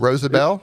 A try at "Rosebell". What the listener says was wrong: Rosebell. I just imagined an A in there for Rosabelle. It's Rosebell.